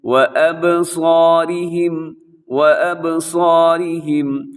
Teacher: صاد موٹا رکھنا ہے، الف بھی موٹی ہے، را باریک ہے، را کی نیچے حرکت ہے